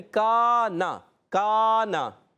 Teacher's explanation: اور کانا کاف علی زبر کا ایک الف کھینچیں گے، نون پر حرکت ہے زبر کی نہیں کھینچیں گے